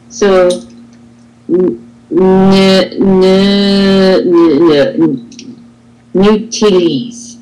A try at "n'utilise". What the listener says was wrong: Perfect. And don't forget about that z.